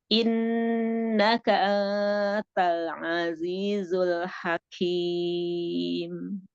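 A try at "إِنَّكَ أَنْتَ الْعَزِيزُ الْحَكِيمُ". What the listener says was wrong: Innaka A-nya kebuka dulu. Anta baru kita siapin untuk ketemu taknya kan untuk ikhfanya. Anta. Berarti sama memang masih belum A-nya belum kebuka. Ana juga suka gitu kalau misalnya udah sambung ada anta pasti hamzahnya itu enggak kebuka sempurna ya.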